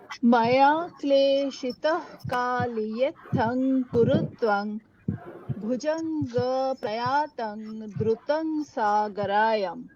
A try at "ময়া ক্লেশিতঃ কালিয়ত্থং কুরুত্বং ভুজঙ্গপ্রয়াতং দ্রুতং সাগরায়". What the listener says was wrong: Lovely, খুব ভালো হয়েছে।